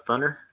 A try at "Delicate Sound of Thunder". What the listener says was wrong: I think you left off the D, and it sounded very Indiana.